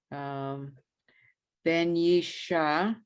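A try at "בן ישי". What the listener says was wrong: Ben Yishai is a yud.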